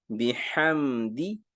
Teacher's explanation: دال کی زیر کو باریک پڑھیں گے